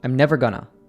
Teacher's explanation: going to is commonly reduced to just gonna